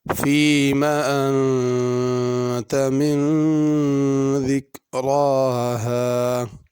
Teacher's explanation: انت کے نون پہ غنہ کرنا ہے، من کے نون پہ بھی غنہ ہے